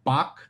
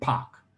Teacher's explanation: bach is going to have a lower first formant than pac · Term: voiced onset